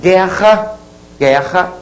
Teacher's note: o u não é pronunciado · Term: dígrafo